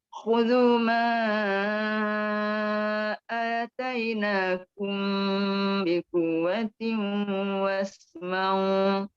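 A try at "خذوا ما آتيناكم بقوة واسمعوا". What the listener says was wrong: Berdengung ke tak berdengung tu? Berdengung ke tak berdengung? Patut pun Ustaz dengar berdengung. Kalau berdengung tak betul lah. Kena baca jangan dengung.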